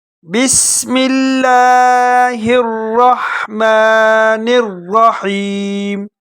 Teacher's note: مختصر میں آپ کو بتا دیتا ہوں، سین میں تھوڑی سیٹی کی آواز نکالنی ہے۔ لفظ اللہ کو باریک پڑھنا ہے اور را کو موٹا پڑھنا ہے، اور دوسرے را کو بھی موٹا کر کے پڑھنا ہے۔